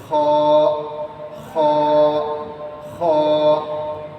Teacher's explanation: কণ্ঠনালীর শেষ ভাগ থেকে খ উচ্চারণ করতে হবে।